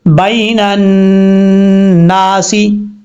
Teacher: نون کے اوپر شد ہے، غنہ کریں گے ایک الف کی مقدار